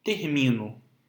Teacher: Em termino, nós também temos uma palavra trissílaba com a sílaba tônica como sendo a penúltima. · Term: palavras paroxítonas